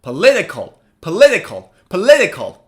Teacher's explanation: stress is on the second syllable so the second syllable should be read louder than the others